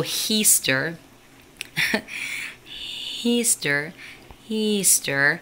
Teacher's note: the trick is saying like an H before the vowel, but then trying to drop the H but still have that sound there. Like that's really, so Heaster, Easter, Easter, not Easter, but Easter, oh my God.